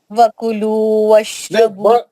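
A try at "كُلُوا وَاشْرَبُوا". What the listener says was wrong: ایک منٹ, وہ کلو نہیں ہے نا, خالی کلو ہے نا.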